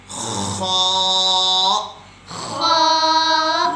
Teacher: نقطے والا خا، وہ خلق کے شروع والے حصے سے ادا ہوتا ہے۔ جیسا میں نے بتایا نا، خلق کے 3 گردن کے 3 حصے ہیں، ایک درمیان والا حصہ، ایک شروع والا حصہ اور ایک آخر والا حصہ، اور شروع والے حصے سے نقطے والا خا ادا ہوتا ہے۔